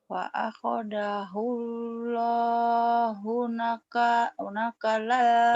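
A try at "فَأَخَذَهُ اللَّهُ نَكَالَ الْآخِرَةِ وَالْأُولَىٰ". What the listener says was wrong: nakalan panjang fa'akhadahu Allahu panjang fa'akhadahu naka nakanya panjang nakalal akhirati wal ini agak susah nanti di kakak latih ya fa'akhadahu Allah nakalal akhirati wal ula fa akhadahullahu nakalal akhirati wal ula.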